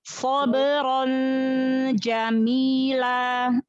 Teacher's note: Sod adalah huruf isti'la, huruf tebal, maka pangkal lidah diangkat. Pangkal lidah yang bagian lidah dekat dari tenggorokan.